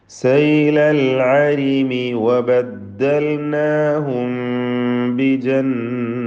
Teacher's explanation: സാക്കിന മീമിന് ശേഷം ബാ വന്നതിനാൽ ഇഖ്ഫ ഷഫവി നൽകി മണിച്ചുകൊണ്ട് ഉച്ചരിക്കണം. അവ്യക്തമാക്കി മണിക്കണം എന്നർത്ഥം.